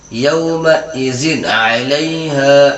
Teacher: نون کی آواز کو ظاہر کر کے بلا غنہ کے جلد پڑھیں گے۔ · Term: اظہار